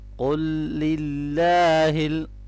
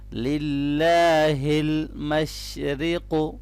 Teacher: اللہ کے نام کو ہم باریک پڑھیں گے کیونکہ یہاں پر زیر ہے